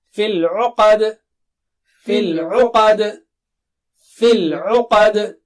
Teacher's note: قا موٹا اونچا اور آخر میں قلقلہ